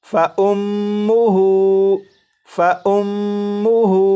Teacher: اسی طرح یہ جو لفظ ہے اس لفظ میں یہاں پر میم مشدد ہے تو میم مشدد میں غنہ کریں گے